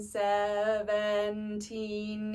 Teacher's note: What makes it tricky too is that in those sounds, the teen is a lot. You have that that plosive T that propels you into the second syllable, which makes it feel faster.